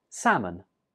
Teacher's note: the L is not pronounced. So in writing, we write it with an L, but when we're speaking, we don't say that L.